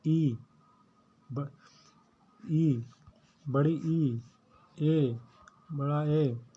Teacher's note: जो आगे वाली जीभ से बोले जाते हैं उन्हें बोलते हैं अग्रस्वर।